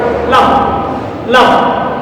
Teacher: জিহ্বার অপর পাশ ও তার সামনের উপরে দাঁতের গোড়ার তালুর সাথে মিল করে উচ্চারণ করতে হয় লাম